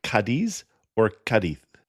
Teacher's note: either Cadiz or Cadith with the emphasis on the first syllable